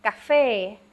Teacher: the fe is the one that is accented